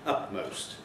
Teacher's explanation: utmost becoming a P, a bilabial consonant. So the alveolar moves to the lips.